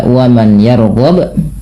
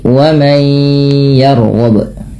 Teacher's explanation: Maka cara membacanya adalah dengan mengidgamkan atau memasukkan nunnya kepada huruf setelahnya. Yaitu di sini huruf nunnya dimasukkan ke ya dan kemudian ditahan dengan ghunah. Maka dinamakan idgham bighunah.